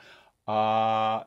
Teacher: it's an open unrounded back vowel in fact it's the most open back vowel